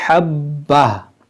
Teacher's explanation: और यहाँ पर हमें वक्फ़ करना होता है। हम रुकेंगे तो इस गोल ता को हम हा साकिना से बदलेंगे, इसको पढ़ेंगे हब्बा